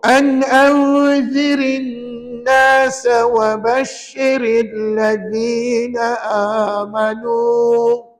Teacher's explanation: Ada 2 ra. Kebetulannya dua-duanya baris bawah. Maka ra-nya nipis